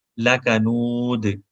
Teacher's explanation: یہ بریک کاف ہے اور اس کے بعد دال پہ کلکلا ہے. دو پیش بھی ختم ہو جائیں گی وقف میں، تو لکنودن کو ہم لکنود پڑھیں گے.